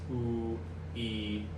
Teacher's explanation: these closed vowels ooh e they have low first formants and so you have to adjust your voice to change so